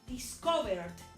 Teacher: Entonces acá ya le puse LD en alguna norma, pero la clave en el sonido es que suena como una D. Aunque yo ya le haya puesto ED, esa E no va a sonar.